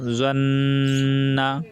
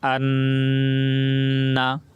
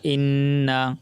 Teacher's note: নাকের ভিতরে নিয়ে গুন্না করে পড়তে হয়, অর্থাৎ নাক দিয়ে আওয়াজ করতে হবে।